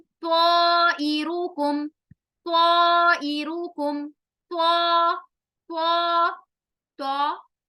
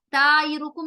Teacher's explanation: त्वा मोटा हरफ है, हुरूफ़े मुस्तालिया है, जब ये अलिफ के साथ आ रहा है तो यहाँ अलिफ तफ़कीम भी होगा